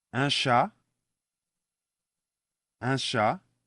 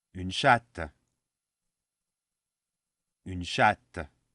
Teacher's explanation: the last consonant, the T of chat, which is silent, becomes double T's in the feminine, and it's no longer silent.